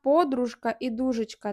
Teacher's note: в обох словах лишається ж твердий звук а в останньому слові джгутовий там лишається африкат Дж коли д